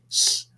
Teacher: and those are alveolar fricatives